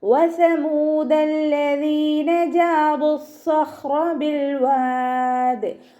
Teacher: വസമൂദ വാവ് ഉച്ചരിക്കുമ്പോൾ ചുണ്ടുകളൊന്ന് സർക്കിൾ ചെയ്ത് കൊടുക്കുക. സ ലൈറ്റ് ആക്കിയിട്ട് ഉച്ചരിക്കാൻ ശ്രദ്ധിക്കുക.